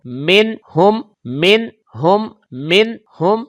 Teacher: یہاں پر نون ساکن کے بعد ہا حروف اظہار کا ہے, لہٰذا یہاں پر غنہ بھی نہیں ہوگا, کلکلا بھی نہیں ہوگا , یعنی کہ آواز لوٹ کر بھی نہیں آئے گی, اور